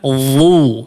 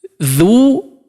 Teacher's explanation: Huruf dha dia memiliki sifat tebal ya, itbaq dan isti'ala. Adapun huruf dzal dia istifal atau tipis dia ya, dibaca tipis.